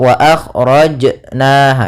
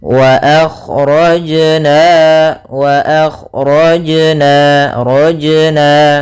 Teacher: ada bacaan qolqalah yaitu suara jimnya memantul